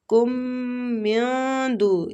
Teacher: مَا لَكُم، میم کو کھینچیں گے، الف مد ہے۔ کم من دو، ادھر نون ساکنہ پہ ہم نے اخفا کرنا ہے، اخفاء حقیقی ہو رہا ہے، نون کو چھپائیں گے۔